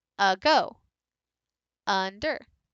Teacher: And then with something where my tone is lower, like ago, under, my voice rose a little bit on the second syllable.